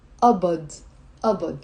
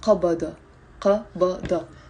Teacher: Now in the Lebanese dialect, we don't pronounce it qabada. We pronounce it abad. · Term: Lebanese pronunciation